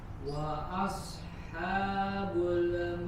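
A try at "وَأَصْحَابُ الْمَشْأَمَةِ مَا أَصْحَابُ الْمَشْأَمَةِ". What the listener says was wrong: Nah, huruf lamnya jangan dipantulkan, huruf lam sukun. Wa ashabul ma'bul, alirkan aja suaranya, tahan di makhrajnya.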